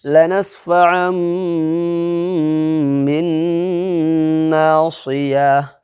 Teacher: دو زبر کی تنوین کو میم سے بدل کر کے اخفا کے ساتھ پڑھیں گے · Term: اقلاب